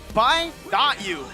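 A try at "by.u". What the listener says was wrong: But you don't say the dot.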